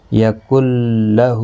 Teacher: ہا کے اوپر کھڑی زبر ہے، ایک الف کی مقدار کے برابر کھینچ کر پڑھیں گے